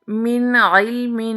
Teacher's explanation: نون ساکن کے بعد حروف حلقی میں سے عین آ گیا تو یہاں پر نون ساکن کو بغیر گننے کے ظاہر کر کے پڑھیں گے، یعنی یہاں پر اظہار حلقی کا قاعدہ ہوگا۔